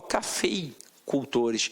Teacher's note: eu tenho uma junção de vogal e semivogal, né? O E é vogal, aqui no caso, e o I é semivogal. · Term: ditongo